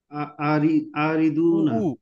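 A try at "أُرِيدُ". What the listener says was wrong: উ উ উ পেশ হবে উরিদু।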